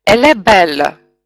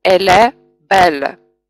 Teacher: И получается «elle belle». Мы согласный звук этого слова прибавляем к гласному звуку следующего слова. И в итоге у нас получается один слог. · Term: enchaînement